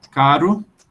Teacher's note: o tep é o r simples